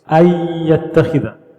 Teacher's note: The noon is gone. It gets literally assimilated into or merged into the next letter. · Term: idgham